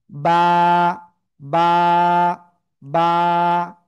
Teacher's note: দুই ঠোঁটের ভিজা অংশ থেকে এই অক্ষরটা উচ্চারণ হবে, একালিপ টান হবে,